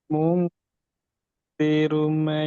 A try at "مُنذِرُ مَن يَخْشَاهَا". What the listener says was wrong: Ru tebal. Ya, tapi pendek. Ru. Tebal tapi pendek.